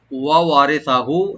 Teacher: ওয়া ওপেন রাখবেন, ওয়া দুইটা ওয়া ওপেন করে পড়বো আমরা, রাটাকে একটু পাতলা করে পড়বো